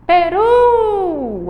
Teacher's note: é uma palavrinha oxítona porque a última sílaba é mais forte · A gente sabe que aí, ó, a sílaba mais forte é o ru.